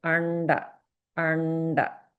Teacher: the anuswara is combined with a rda sound. This is the murdhanya rda.